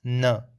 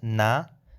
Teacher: it's n, not na, because na means no, and n with an schwa sound means not